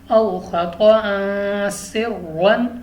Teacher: سین ہمارے پاس چونکہ حروف اخفاء میں سے ہے تو ہم نے غنہ کر کے پڑھنا ہے۔